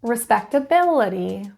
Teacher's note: the stress is in syllable four